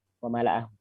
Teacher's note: Yang panjang adalah hu-nya. Karena di situ ada mad. Kemudian di situ ada kalimat, ya, apa lagi ya?